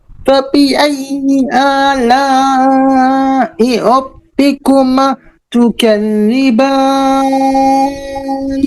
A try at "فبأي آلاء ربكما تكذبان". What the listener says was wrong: এখানেও রব্বিকুমা মাদ মিস হয়ে গেছে। রব্বিকুমা রব্বিকুমা তুকাজ্জিবান। এই যে রব্বিকুমা মাতে মিস হয়ে যায়, মাদ মাদ অফ হয়ে যাচ্ছে আপনার। তো এই মাদগুলো একটু খেয়াল করবেন, রব্বিকুমা প্রত্যেকটাতে যেন মাদটা মিস না হয়ে যায়।